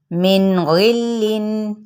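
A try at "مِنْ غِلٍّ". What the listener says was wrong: मिन को हिलाना नहीं, ठीक है, नून साकिन को।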